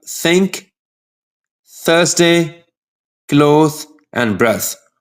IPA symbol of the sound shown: θ